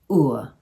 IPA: Ʊǝ